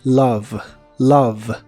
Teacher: la O de esta palabra realmente se pronuncia como A y la E del final, como casi siempre, no se pronuncia. Así que la palabra es love.